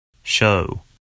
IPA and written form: ʃəʊ (show)